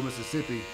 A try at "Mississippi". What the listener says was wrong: Mississippi. Not Mississippi, Mississippi. There's some syllables in there that you gotta pronounce them all, not just run it all together.